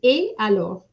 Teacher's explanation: you know that et is a forbidden liaison. So you cannot have a liaison with et.